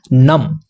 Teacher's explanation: دوسرے والا نون ہم سائلنٹ کریں گے اور وہاں پر ہم میم پڑھیں گے۔ تو اقلاب کا بیسیکلی قاعدہ یہ ہوتا ہے نم۔